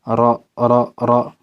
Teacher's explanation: Karrironna itu artinya salah satu sifat ra itu adalah takrir, bergetar